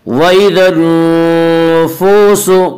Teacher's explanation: واو مدہ کو ایک الف کے برابر کھینچ کر پڑھیں گے۔ وَإِذَا النُّفُوسُ، وَإِذَا النُّفُوسُ زُوِّجَتْ، آگے آیت ہے وقف کریں گے، اور یہاں وقف بالسکون ہوگا۔